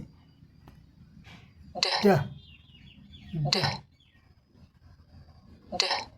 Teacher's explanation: दूसरा चरण यहाँ है move tongue down to release air. हवा को छोड़ने के लिए, रिलीज करने के लिए हमारी अपने जीभ को नीचे करते हैं और तेज़ी से हवा बाहर निकल जाती है। और यहाँ गले में जो वोकल कॉर्ड है यहाँ कंपन होता है।